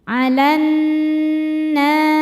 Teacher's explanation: Cara bacanya alif lam lewatin jangan baca masuk langsung ke nun. Alanna nunnya ghunah musyaddadah karena nun bertasydid. Cara bacanya berdengung. Dengungannya tahan kurang lebih dua harakat. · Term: alif lam syamsiyah